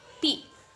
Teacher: For example, bilabial. Bilabial found if we obstruct our vocal tract at the lips.